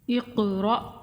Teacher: قاف پہ کلکلا کریں گے، اس کو تھوڑا ہلا کر پڑھیں گے اور اس کو موٹا بھی پڑھیں گے۔ اقرأ، قا کو بھی موٹا پڑھیں گے۔